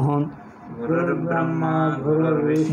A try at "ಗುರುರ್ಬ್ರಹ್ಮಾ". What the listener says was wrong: ಬ್ರಹ್ಮ ಹೇಳ್ತಾ ಇದ್ವಿ, ಗುರುರ್ಬ್ರಹ್ಮ ಹಾ ಬರಬೇಕು, ಬ್ರಹ್ಮ ಮಾನಂತರ ಹಾ ಬರೆದರೆ ಹೇಗಿರುತ್ತದೆ ನೋಡಿ, ಮಾನಂತರ ಹಾ ಬರೆದರೆ ಮಾಕಿ ಹಾವತ್ತು ಬರೆದರೆ, ಮಾಕಿ ಹಾವತ್ತು ಬರೆದರೆ ಹೇಗೆ ಉಚ್ಚಾರಣವೋ ಹಾಗೆ ಆಗಬೇಕು. ವೇದದಲ್ಲಿ ನಿಯಮ ಇದೆ, ಅಲ್ಲಿ ಬರೆಯುವುದು ಹಾಕಿ ಮಾ ಇದೆ, ಉಚ್ಚಾರಣದಲ್ಲಿ ಮಾಕಿ ಹಾ ಎಂದು ಹೇಳಬೇಕು, ಅದೊಂದು ವೇದ ನಿಯಮ ಇದೆ ಅದಕ್ಕೆ.